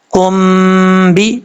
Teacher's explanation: اب یہاں پر کاف کو با سے کنیکٹ کریں گے، یہاں پہ غنہ کریں گے ایک الف کی مقدار